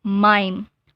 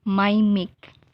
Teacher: So the I sound here is a long I, mime. And the word mimic. So the I sound here is just a short sound of I, mimic. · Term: vowel shift